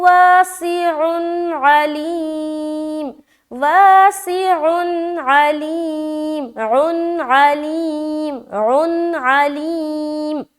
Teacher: اور اس کے بعد علیم, عین زبر عا, لام یا زر لی, یا مدہ اور میم کے اوپر وقف, دونوں جگہ عین واضح ہونا چاہیے